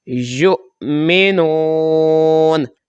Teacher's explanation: یہ یا کو جب حمزہ ساکن کے ساتھ جب ہم ملا کر پڑھیں گے تو جھٹکے سے پڑھیں گے